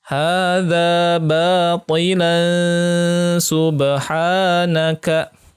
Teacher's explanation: Karena sin merupakan salah satu dari huruf ikhfa dan bacanya adalah ditahan selama 2 harokah.